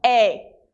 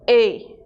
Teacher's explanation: o é em espanhol não é aberto